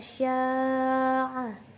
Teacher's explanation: Panjang mad wajib mutasil adalah 5 harokat.